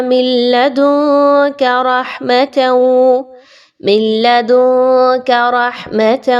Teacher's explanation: نون ساکن کے بعد کاف ہے تو آپ یہاں پہ نون کی آواز کو چھپائیے